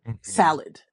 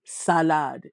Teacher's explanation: Each syllable usually holds the same weight. So, in English, we have a kind of swing like we'll say salad or things like that. But in French, it's salad. It's very, very even.